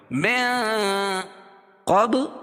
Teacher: نون ساکن کے بعد حروف اخفاء کی 15 حرفوں میں سے قاف ہے تو یہاں ناک میں آواز کو چھپا کر پڑھیں گے۔ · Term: اخفاء حقیقی